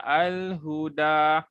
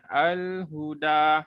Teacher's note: Huruf ha dekat mana dia keluar? Dekat kerongkong.